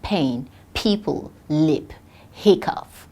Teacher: as a voiceless bilabial plosive as in pain people lip hiccup